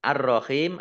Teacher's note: Kemudian ar-rahim alif lam samsiah karena tidak dibaca, ro langsung masuk ke huruf berikutnya yaitu ro, ditandai ro-nya ada tasdidnya. Ro-nya dibaca double.